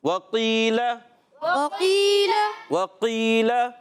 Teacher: قاف کا مخرج زبان کی جڑ تعلقہ نرم حصہ، زبان کی جڑ تعلقہ نرم حصہ۔